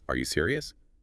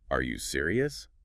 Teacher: It barely sounds like a question. But add that little upward flick at the end